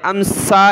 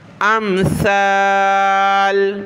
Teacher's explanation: सीटी की आवाज़ नहीं आनी चाहिए सा पर